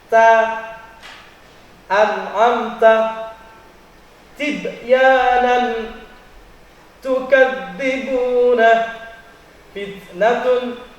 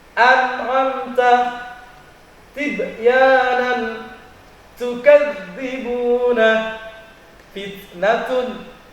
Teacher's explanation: huruf ta yang keluar daripada ujung lidah dengan pangkal 2 buah gigi